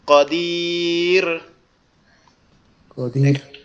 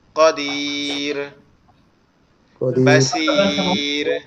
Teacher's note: ওয়াক্কাফের কারণে যদি রয়ে সাকিন হয় আর তার ডান পাশে যদি ইয়া থাকে তাহলে বারিক করে পড়তে হবে